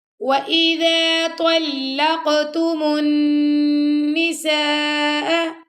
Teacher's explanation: نون پہ ہمیں غنہ کیا